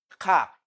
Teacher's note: is a voiceless velar plosive